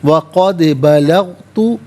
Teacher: قد میں دال ساکن ہے لیکن حرف قلقلہ ہے تو آواز لوٹتی ہوئی محسوس ہونی چاہیے۔